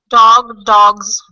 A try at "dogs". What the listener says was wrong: Of course. Okay, dogs.